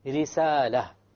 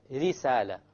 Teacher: So obviously, when there is a kasra, the ra will be light.